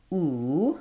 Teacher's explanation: And what I mean by that is that when I say ooh, the tongue should be high and there should be space in the back as well as in the front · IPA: /u/